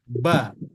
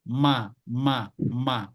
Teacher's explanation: kalau pada huruf ba ada tekanan sedikit kalau pada huruf mim dia tidak perlu tekanan yang luar biasa atau tidak perlu tekanan yang kuat jadi ma ma ma tapi ba agak sedikit ba [Musik] ba